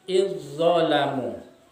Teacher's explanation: Id itu huruf zal mati disambut dengan huruf za yang berharokat. Tetapi cara membacanya adalah memasukkan huruf zal atau diabaikan huruf zal, kemudian seakan-akan bertasdis langsung ke dalam huruf za. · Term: idgham mutajanisain